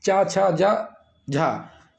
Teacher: ये हमारा तालव्य है, यानी ये तालु से बोले जाते हैं।